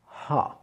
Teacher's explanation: En français, on a tendance à avoir un son qui vient vraiment du bout de la bouche, presque que des lèvres, alors que là, le A, il va venir un petit peu plus profond, un petit peu plus de la gorge. Donc on dira bien ha.